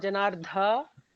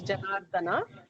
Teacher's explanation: an alpa prana da, it's not Janardha, it is Janardana